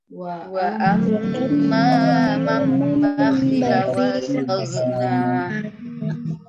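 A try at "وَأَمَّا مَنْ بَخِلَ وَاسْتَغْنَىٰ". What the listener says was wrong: Di huruf gho-nya itu hati-hati. Huruf gho. Gho ini bukan huruf qalqalah. Jadi enggak dipantulkan.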